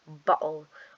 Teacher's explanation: in many British accents the T sounds are glottalized and instead of fact sound turns into an uh sound like